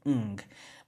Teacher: It's gonna have that ng, that velar nasal sound, ng. But if it's a consonant that's not an n, then it's just gonna keep the nga form itself.